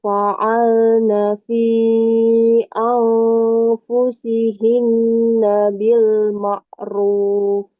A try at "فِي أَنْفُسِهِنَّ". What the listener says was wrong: In kurang dengung. Coba ulang. Angfus.